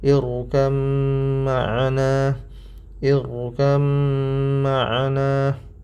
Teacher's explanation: Jadi di sini huruf bnya diidghamkan pada huruf mim karena ba mim makhrajnya sama tetapi sifatnya yang berbeda. Hafz dari asim jalur syatibiyah ini dibaca dengan idgham dan ini dilewatkan hidung. Jadi dibaca ir ini rnya ditebalkan karena sebelumnya hamzah wasal. · ro-nya ditebalkan karena sebelumnya hamzah wasal. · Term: idgham mutajanisain